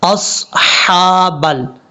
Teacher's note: صاد کے بعد جو ہا ہے یہ ہا بریک ہے، اس کو بھاری ساؤنڈ میں نہیں پڑھنا۔ اصحابل حابل، اس طریقے سے اصحابل پڑھیں گے تو یہ غلط طریقہ ہے۔